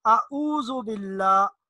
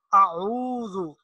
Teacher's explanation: عین یہ بھی حلق سے ادا ہوتا ہے لیکن یہ حلق کے درمیانے حصے سے